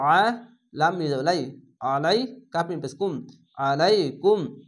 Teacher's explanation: আইনটিকে মোটা করে গলা চিপে পড়বেন।